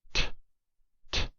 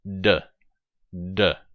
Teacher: one of them is voiceless, t, and d is voiced. So you can feel it if you put your hand on your larynx and say t, t, d, d, t, d. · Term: consonant pair